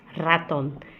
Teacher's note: R tem som forte no início das palavras